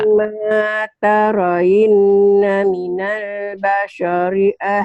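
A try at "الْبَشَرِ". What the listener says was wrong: Basyari, bukan Basyori, Basyari, Shin. Basyari, ya Basyari, bukan Basori ya Basyari.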